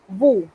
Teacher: Noten que nuevamente me he comido la S. Esa S no se pronuncia a menos que haya un caso especial.